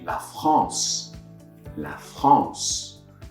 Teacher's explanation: so I open my mouth wider as if I was saying ah and then I close it a little bit to get that nasal sound